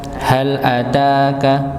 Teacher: huruf ta di sini dipanjangkan dikarenakan dia bertemu alif sebelumnya fathah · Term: dua harakat